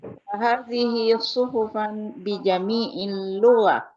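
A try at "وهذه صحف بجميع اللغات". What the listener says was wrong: Gua-nya panjang. Lugos. Karena kan banyak bahasa.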